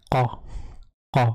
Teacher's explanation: Donc c'est un peu avec le fond de la gorge. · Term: le Qaf